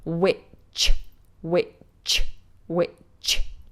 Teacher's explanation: making sure that witch in both with the ch is nice and strong, explosive.